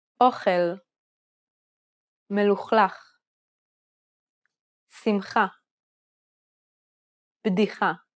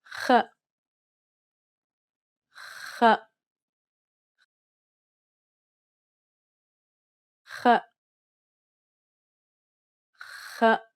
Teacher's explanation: This is very similar to the CH sound in the words Bach or Loch Ness, except it's pronounced even further back in the mouth. Push the back part of the tongue further into the back of the mouth until you contact the uvula. Allow a small stream of turbulent air to seep through the opening.